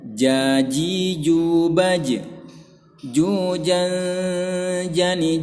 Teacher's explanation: tengah lidah bertemu dengan bagian rongga mulut atau langit-langit mulut bagian yang keras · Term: makhroj huruf Jim